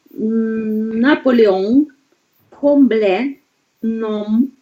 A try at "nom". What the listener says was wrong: Только я слышу «мы», не должна слышать. Еще глубже.